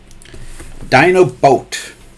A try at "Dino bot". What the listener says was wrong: Bot, not a boat. No, it's a bot.